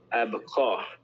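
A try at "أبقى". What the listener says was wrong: And this here is here to show you that you're gonna elongate. So instead of saying abqa, it's abqa.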